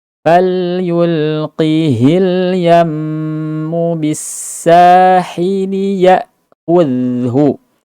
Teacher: Kemudian fil yam, gunnah falyulqihil yammu, falyulqihi. Lam sifatnya adalah tawassut, pertengahan, jadi setengah suaranya berjalan.